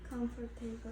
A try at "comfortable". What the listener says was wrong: Yeah, it's in this case you need to be a little bit more quickly with your pronunciation. Comfortable, not comfortable. Comfortable, right?